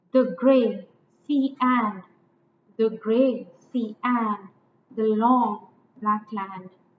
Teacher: it is the same meter that shakespeare used it's iambic meter unstressed and stressed followed by a stress unstressed followed by a stressed so i